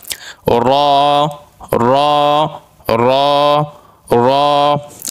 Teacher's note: 10 নম্বর মাখরাজ জিহ্বার আগার পিঠ তার বরাবর উপরের তালুর সঙ্গে লাগাইয়া